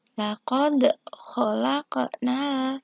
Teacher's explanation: laqad ini adalah hukum bacaannya memantul yaitu qalqalah sugro